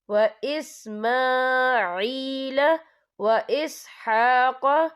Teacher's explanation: میم کے اوپر کھڑی حرکات ہے، تو ہم یہاں 2 یا 3 حرکت کے برابر کھینچیں گے